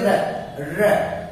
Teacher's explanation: र में जीभ मुड़ करके ऊपर छू रही है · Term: मूर्धन्य